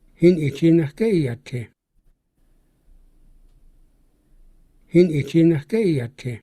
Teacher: even though it's a question, iati stays low tone? He doesn't say iati, he says iati.